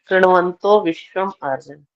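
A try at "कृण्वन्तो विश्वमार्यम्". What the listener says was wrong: अब अलग अलग कर दिया, विश्वम आर्यम नहीं बोलना था, बोलना था विश्वमार्यम। विश्वमार्यम। और वैसे अलग अलग करने पर संधि विच्छेद होगा तब विश्वमार्यम हो जाएगा।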